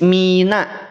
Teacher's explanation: jangan sampai nun ini dia tertarik menjadi tebal